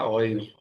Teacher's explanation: غین تو حروف حلقی میں سے ہے، یعنی غین نکلتا ہے حلق کے اوپر والے حصے سے